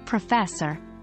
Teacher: we keep the stress on the first syllable when saying professor